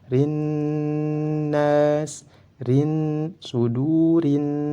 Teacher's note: Lam syamsiyah atau idgham syamsiyah, lamnya dimasukkan ke dalam nun. Nun ini merupakan salah satu huruf dari syamsiyah, maka lamnya tidak dibaca, langsung dimasukkan ke huruf nun.